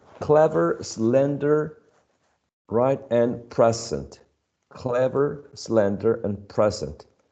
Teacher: the second syllable is unstressed